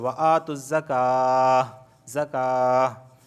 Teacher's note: وَآتُوا الزَّکَاةَ، اب دیکھیں زکاتا، اصل میں کیا زکاتا، لیکن وقف کی صورت میں یہ گول تا ہا سے تبدیل ہو جاتا ہے، تو یہاں پر ہا کی آواز آئے گی وقف کی صورت میں۔